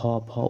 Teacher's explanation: भ का उच्चारण स्थान क्या है तो ओठ